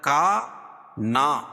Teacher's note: کا نا دونوں کو کھینچیں گے کیونکہ الف سے پہلے زبر ہے، یہاں بھی الف سے پہلے زبر ہے. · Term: الف مدہ